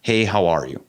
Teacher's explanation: American is very simple and straightforward it's like it goes from high to low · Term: intonation thing